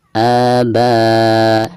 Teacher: ketika membaca a-nya yaitu dipanjangkan 2 harokat karena di sini dihukumi mad badal